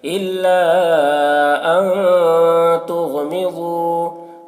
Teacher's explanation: نون ساکن کے بعد حروف اخفا میں سے تا ہے تو یہاں پر اخفا ہوگا